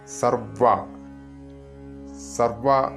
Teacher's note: ചൊല്ലുമ്പോൾ ശ്രദ്ധിക്കേണ്ടത് വ ദ്വിത്വമായിട്ടാണ് ഉച്ചരിക്കേണ്ടത്